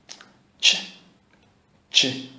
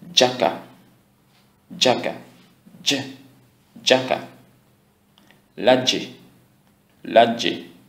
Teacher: consonne dont il y a une modification de son prononcé plus en avant du palais dur que le son d'origine. Plus en avant du palais dur que le son d'origine. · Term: palatisé